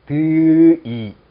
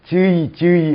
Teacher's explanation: 앞쪽에서 발음되는 드이 하는 것보다 같은 곳에서 발음되는 즈이 하는 것이 훨씬 발음하기가 편한 거죠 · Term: 구개음화